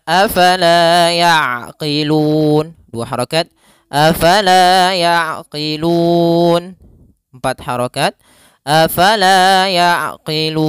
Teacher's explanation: kita boleh memanjangkan 2 harakat, boleh 4 harakat dan boleh pula 6 harokat. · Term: mad arid lisukun